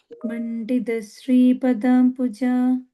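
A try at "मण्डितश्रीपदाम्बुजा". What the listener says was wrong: Ta, stress, not soft like da, but ta. Mandita Shri Padambuja.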